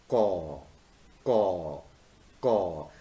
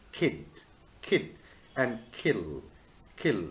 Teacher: There is a voiceless velar sound represented by the symbol caw, caw, caw. · You will find a soft area which is called soft palate or the velum. Sounds produced with the back of the tongue against the velum are called velars. So the back of the tongue and the velum will be in action.